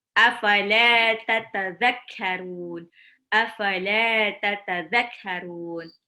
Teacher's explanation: Belakangnya ada mat arid li sukun, dibaca 2 sampai 6 harokat.